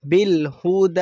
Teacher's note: دال پر کھڑا زبر ہے اس لیے اسے بھی کھینچیں گے ایک الف کے برابر